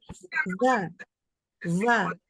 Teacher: Sekarang apa yang terjadi kalau misalkan makhrajnya itu kan tadi gigi atas ketemu bibir bawah ya, bagian dalam. Tetapi terlalu dalam, terlalu bawah di bagian bibirnya itu. Maka huruf fa-nya itu jadi kayak huruf V. Bahasa Inggris ya bacanya jadi va.